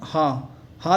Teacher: कंठ महाप्राण घोष व्यंजन वर्ण का उदाहरण हा है